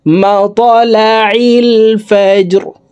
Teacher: ত কলকলার হরফ উপরের দিকে ধাবিত করে ধাক্কা দিয়ে উচ্চারণ করব।